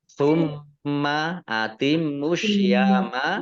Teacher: mim tasdid dibaca guna atau mendengung dibaca ditahan 2 harokat